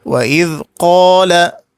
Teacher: نسيب الألف ونبص على القاف اللي قبلها، هنلاقي عليها فتحة، والفتحة من جنس الألف، يبقى أمد الألف مد طبيعي مقدار حركتين.